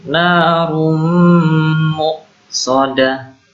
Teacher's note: Ini dhammatain ketemu mim. Ini bacaan idgham bi gunnah. Jadi masuk dengan dengung.